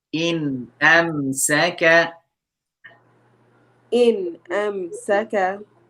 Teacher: noon sakin followed by another throat letter, which is hamza. So we need to make the noon clear